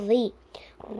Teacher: زبان کی نوک کو سامنے کے دو دانتوں کے کنارے میں لگانے سے ذال ادا ہوتا ہے. ذال کو ہم باریک پڑھیں گے.